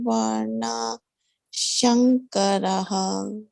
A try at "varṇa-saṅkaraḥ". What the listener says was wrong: Saṅkaraḥ. Jāyate varṇa-saṅkaraḥ. Sankar, not Shankar. Sankaraḥ.